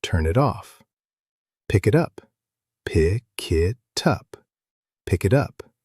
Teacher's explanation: The N jumps over and joins the apple. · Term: linking